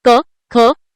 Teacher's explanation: कंठ व्यंजने ज्यांचा उच्चार कंठातून होतो